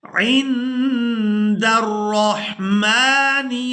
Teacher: नून साकिन पर इख्फा करेंगे, यानी नून की आवाज को नाक में छुपाकर अदा करेंगे